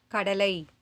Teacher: சொல்லின் இறுதியில் வரும்போது ஐகாரம் 1 மாத்திரையாக குறைந்து ஒலிக்கிறது.